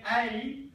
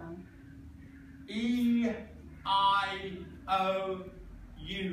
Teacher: So there's no obstruction in the mouth. The sound comes through the mouth relatively clearly, unlike consonants where you get obstruction, where the tongue moves around. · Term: vowel